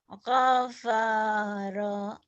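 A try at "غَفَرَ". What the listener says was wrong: Gofaro. Nggak ada yang panjang. Gofaro.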